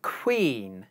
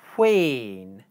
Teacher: the aspiration from the k consonant carries over into the w consonant